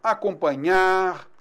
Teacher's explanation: o acento, né, tônico recai sobre a última sílaba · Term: oxítonas